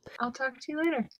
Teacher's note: the a in talk involves an open relaxed lip position